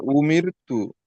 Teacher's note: উমি উ উটা এটা তো, উমির, হ্যাঁ উ যে মুখটা গোল হচ্ছে এটা হামজার জন্য গোল হচ্ছে, আর এই র, উমির র গোল হচ্ছে না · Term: বারিক